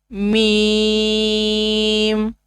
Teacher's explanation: دونوں ہونٹوں کے خشکی والے حصہ سے میم ادا ہوتا ہے